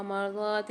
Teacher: مرضات اللہ میں ضاد کو موٹا پڑھیں گے اور کھینچ کے بھی پڑھیں گے، ایک الف مدار